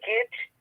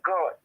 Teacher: The tongue is right close to the palate when you pronounce the letter E, the vowel E. But when you pronounce the vowel O, the mouth is more open and the tongue is away from the palate.